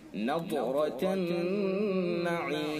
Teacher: ضاد حروف مستعلیہ میں سے، لہذا ضاد کو پر کر کے پڑھیں گے، اور را کے اوپر زبر ہے، لہذا را کو بھی پر کر کے پڑھیں گے. اور نون حرف مشدد ہے، لہذا نون کے اندر غنہ کریں گے